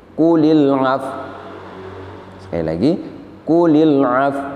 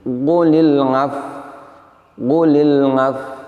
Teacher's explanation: Jadi bibirnya tidak mencucu, sehingga apabila kita prakteknya membacanya demikian, maka kita ini seakan-akan menghilangkan huruf wawu.